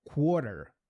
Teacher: tem o som do U, ele é como se você juntasse o K e o W